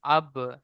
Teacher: বায়ের উপরে সাকিন আছে, বা হুরুফে কলকলা, তাই বাকে কলকলা করেই ডান দিকের অক্ষরের সাথে মিলিয়ে পড়তে হবে